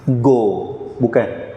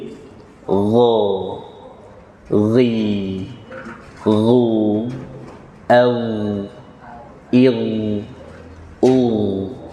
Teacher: Letakkan huruf ghain bersama kho di tenggorokan paling atas. Ya, ghain letaknya bersama kho tenggorokan paling atas.